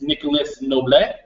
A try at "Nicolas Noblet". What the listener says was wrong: We don't pronounce the S when Nicolas Noble.